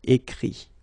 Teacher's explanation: Remember that phonetically this final T doesn't exist. Okay? So the sound will be only this I, écrit.